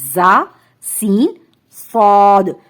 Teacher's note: تو اس کو ادائیگی کا قاعدہ یہ ہے کہ ہمارے جو دونوں دانت ہیں سامنے کے وہ ملیں گے اور ہماری زبان اس کے پیچھے جائے گی، ایسے دیکھیں وسلنگ ساؤنڈ آئے گی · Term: حروف صفیریہ